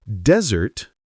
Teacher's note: But desert, stress on the first syllable, means a dry, sandy place.